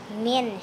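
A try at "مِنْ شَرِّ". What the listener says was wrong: bukan min, ming. Nun ketemu shin, ang. Ming.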